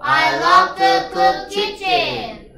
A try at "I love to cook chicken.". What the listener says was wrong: 치킨. 부엌을 요리하지 마시고요. 치킨을 요리하셔요. 키친이 아니고 치킨요. I love to cook chicken.